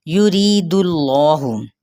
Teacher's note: یرید اللہ، یا کی پیش کو لمبا نہیں کریں گے، ری پہ یا مدہ کا قاعدہ، را باریک پڑھا جائے گا، اس میں جلالہ کا لام پر پڑھا جائے گا کیونکہ پیچھے پیش یعنی ضمہ ہے۔